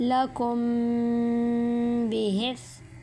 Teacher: آج ہم پڑھیں گے اخفاء شفوی، ٹھیک ہے۔ میم ساکن کے بعد حرف با آ جائیں تو وہاں اخفاء شفوی ہوگا غنہ کے ساتھ